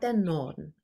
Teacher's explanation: Also das R wird nicht ausgesprochen.